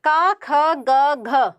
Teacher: कंठ्य ध्वनियाँ, इन्हें का वर्ग की ध्वनियाँ भी कहा जाता है